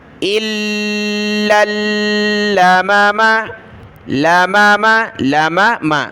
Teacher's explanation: دونوں لام کے اوپر تشدید ہے تو ان کو جمع کر سختی کے ساتھ پڑھنا ہے